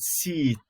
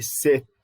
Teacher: Both the E and I are high, they are front, and so high front sounds, both of them. And then the E is tense and the I is lax.